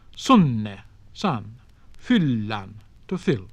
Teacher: when consonants were written double, they were pronounced long, rather as in modern Italian